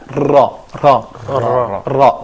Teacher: This letter is similar phonetically to R in English, but by which the tip of the tongue flaps again in the roof of the mouth behind the teeth